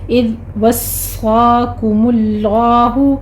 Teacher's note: اذ ذال کو نرمی سے پڑھنا ہے، اس پر جھٹکا نہیں دینا